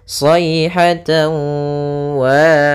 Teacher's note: kita masukkan huruf tanwinnya, yaitu suara tan kepada huruf waw sehingga masuk kepada huruf waw, tawa. Kemudian idgham itu memasukkan, sedangkan bi gunnah artinya disertai dengan gunnah. · Jadi ketika melafalkannya maka harus kita tahan dulu gunnahnya. Sayhatan wa, sebanyak panjang 2 harakat. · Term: idgham bi gunnah